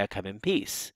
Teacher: But we hear that M sound as if it were an N, because the M sound is one possible realization of the N phoneme. So you can have the actual realization as the N, right, the alveolar nasal, or you can have it as an M, the bilabial nasal.